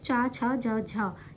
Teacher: जो तालव्य हैं जो तालु से बोले जाते हैं वो चा वर्ग है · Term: तालव्य व्यंजन